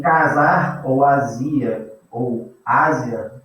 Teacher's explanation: o S está entre vogais, mas o som é de Z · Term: intervocálico